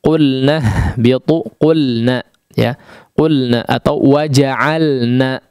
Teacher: wajib dijelaskan pengucapan huruf lam, diizharkan, jangan samar-samar, ya. Jangan samar-samar terganggu dengan huruf nun.